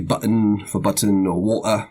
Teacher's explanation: That break between the 2 syllables, that's the glottal stop.